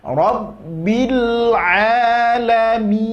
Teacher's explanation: Itu ke huruf e perginya salah, ya, kurang sempurna. Kemudian nun juga di akhir memiliki sifat tawasud. Jadi jangan diputus langsung, ngalirkan sedikit.